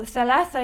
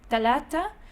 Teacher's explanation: The interdental dhal, dha, tha consonant in MSA may correspond to the Egyptian dental consonants da and ta